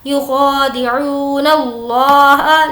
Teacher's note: لفظ اللہ کو پر پڑھیں گے, اس سے پہلے زبر ہے